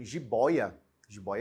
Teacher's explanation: penúltima né eu tenho uma palavra e a penúltima sílaba é a sílaba tônica eu tenho uma paroxítona